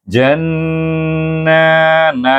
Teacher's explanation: suku kata ja digabungkan dengan Nun jadi Jan tetapi dibaca dengan gunah iaitu dua harakat